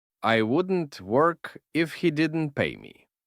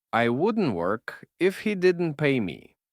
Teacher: Пам'ятайте, що в мовлені для зручності вимови і швидкості останній звук Т може не вимовлятися в словах wouldn't, couldn't і weren't, особливо перед приголосними звуками наступного слова. Так речення буде звучати злито і швидко, і його легше буде вимовити.